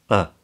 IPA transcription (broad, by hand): ə